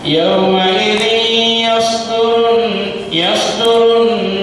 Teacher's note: Yauma ini idgham bi gunnah, lama dengungnya sama dengan ifa